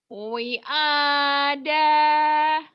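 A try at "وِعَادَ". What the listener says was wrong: Wi-nya panjang, semua panjang Itu bacanya panjang.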